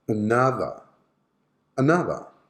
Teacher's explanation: are the unstressed syllables okay the first and the last so the schwa sound should be present on the first and the last syllable